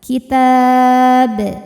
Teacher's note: ba-nya ini dihukumi dengan qalqalah kubra karena huruf qalqalahnya yaitu ba, sukunnya itu tidak asli melainkan sukun karena berhenti, maka dibaca dengan pantulan yang besar.